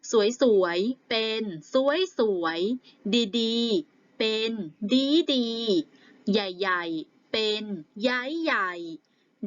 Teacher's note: คำวิเศษณ์บางคำเมื่อเป็นคำซํ้ามีความหมายเน้นหนักกว่าเดิมก็เริ่มโดยมาเปลี่ยนเสียงคำแรกเป็นเสียงตรี